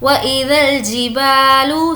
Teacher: बा को खींचेंगे क्योंकि अलिफ मद्दा है।